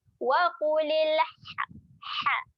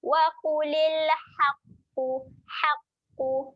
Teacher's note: bunyi dia bunyi ha yang pedas di tengah kerongkong kita tekan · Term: ha pedas